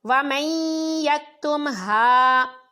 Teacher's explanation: اس میں نون ساکن کے بعد یا ہے تو غنہ کے ساتھ ادغام ہوا